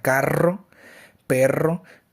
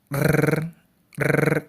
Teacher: encontrar que la lengua vibra repetidamente. Para ejemplificar este tipo de sonido podemos encontrar la palabra carro, perro, que con el sonido, cuando hacemos el sonido de la R, pues esta vibra múltiples veces. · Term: vibrante múltiple